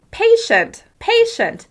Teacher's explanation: In the word patient, I'm emphasizing the first syllable. Patient. Even though you can still hear all the sounds in the second syllable, the first syllable is the clearest and the easiest to understand.